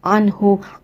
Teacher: انہو، آئین کی جو ساؤنڈ ہے وہ وسط الحلق سے، یعنی آئین کی آواز آپ نے گلے کے درمیانے حصے سے نکالنی ہے۔ مالوہو، یہاں ہا کے نیچے واو صغیرہ ہے یعنی آپ نے اس ہا کو 2 حرکہ کھینچ کے ادا کرنا ہے۔